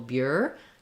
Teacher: So the stress is on the first syllable, bureau. It's going to be long, and the second syllable, O, is going to be a little shorter.